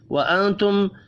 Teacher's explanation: نون ساکن کے بعد تا ہے، اخفاء حقیقی ہوگا